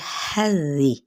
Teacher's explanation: ان حرکات کو لمبا نہیں کریں گے. حذی، ہا پہ ہمز کرتے ہوئے زال کو نرمی سے پڑھیں گے